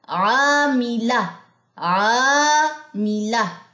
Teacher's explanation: تو عین الف زبر عا, الف مدہ 2 سیکنڈ ہم نے لمبا کیا, اور لام کی زبر کو لمبا نہیں کیا